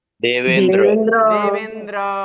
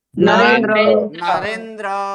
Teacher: तो फिर ये दोनों मिलकर क्या हो जाएगा, ए हो जाएगा। अ और ई मिल गया तो ए बन गया।